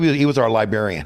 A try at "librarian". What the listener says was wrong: Did you say librarian? There's no R's in that shit? I feel like you just said librarian.